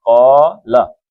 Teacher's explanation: قاف موٹا پڑھنا ہے، 2 حرکتیں ہیں، ایک حرکت قالا.